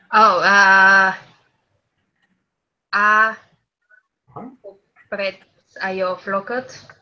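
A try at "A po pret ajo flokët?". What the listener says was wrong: Very well.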